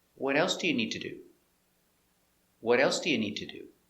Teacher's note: Because this is an information question, the intonation goes down at the end.